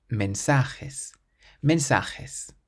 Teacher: So we stress the syllable before last